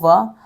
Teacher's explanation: वा व्यंजन हम बोलते हैं दंत ओष्ठ्य में